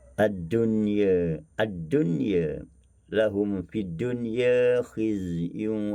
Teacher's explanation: Kalimah ad-dunya pada wazan fu'la, maka Susi membaca dengan taqlil.